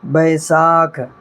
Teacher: بیساکھ، با یا زبر بے، سین الف زبر سا، کھا ساکن، بیساکھ۔ اس کو جو ہے نا کاف اور ہاء الگ الگ نہیں پڑھنا ہے، یہ کاف میں ہاء مل گیا تو ہو گیا یہ کھا، ٹھیک ہے۔ شروع میں ہم لوگ پڑھ چکے ہیں، کاف میں ہاء مل گیا یہ ہو گیا کھا، تو با یا زبر بے، سین الف زبر سا، کھا ساکن، بیساکھ۔